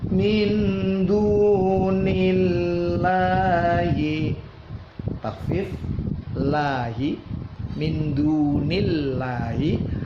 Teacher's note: dalam jalalah bertasydid sebelumnya kasrah baca tipis. Min dunillahi ada harokat berdiri dibaca mad tabi'i dua ketuk.